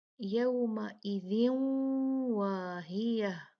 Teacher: ادغام ناقص ہوگا 2 کاؤنٹ غنہ کریں گے